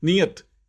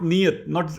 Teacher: it's not the longer I, it's the shorter I